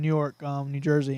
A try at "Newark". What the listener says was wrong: You're saying New York. There's no Y. It's Newark. There's no Y, though. It sounds like you're saying New York.